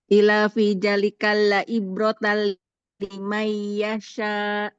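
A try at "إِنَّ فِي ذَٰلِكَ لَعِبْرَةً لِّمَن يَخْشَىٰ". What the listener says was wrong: Ila atau inna? Masih salah juga. Bukan tadi Ibu Ila ya. Innanya di iniin Bu digunakan. Inna fi dzalika la'ibratan yakhsha.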